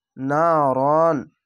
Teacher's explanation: এখানে নারন বলতে হচ্ছে, এখানে কোনো গুণনা হবে না